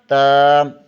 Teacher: زبان کی نوک ثنائے علیہ کی جڑ سے لگے تو تا ادا ہوتا ہے